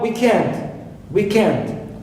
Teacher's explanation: i stress end second part not weak right also i have mankind mankind so i stress second element